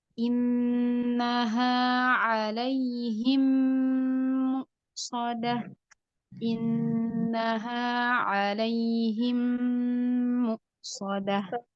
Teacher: Di bagian contoh, idgham mislain, mim sukun bertemu dengan huruf mim. Maka dipanjangkan 2 harokat karena ada gunnahnya.